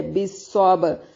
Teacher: با پہ کلکلا اور صاد کو موٹا ادا کریں گے، را کو باریک ادا کریں گے